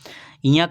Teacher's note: ञ का उच्चारण तालु के साथ नाक से होगा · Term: नासिक व्यंजन